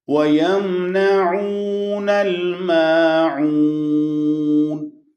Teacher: بعض لوگ ما کو لمبا کر دیتے ہیں، ماعون نہیں، یہ عین ہے، حمزہ نہیں ہے اس کے بعد، اس لیے یہاں پر مد نہیں ہے